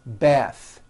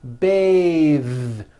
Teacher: when you change it into a verb, to bathe, the vowel changes to an A sound and the TH is voiced.